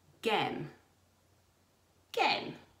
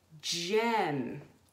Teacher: This word, although it's spelt with the letter G at the start, doesn't have the G sound. It makes the J sound. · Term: soft G